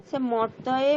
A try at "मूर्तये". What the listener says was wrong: মর্তয়ে কেন, মূর্তয়ে, উকার কেন বাদ দিয়ে?